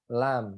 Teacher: ujung lidah bertemu ilal muntaha torf ya, di ujung langit-langit ya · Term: huruf lam